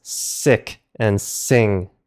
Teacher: Here's the one and only exception. If the ending sound is a back consonant like a K or Q, then it changes into a short I sound